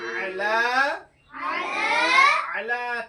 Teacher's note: আলিফ মাদ্দার মতো এক আলিফ পরিমাণ টান দিয়ে পড়তে হবে। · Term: আলিফ মাদ্দার সমতুল্য